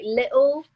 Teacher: people especially from London sometimes drop the T sound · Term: glottal